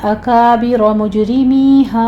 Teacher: जीम के ऊपर कलकला करेंगे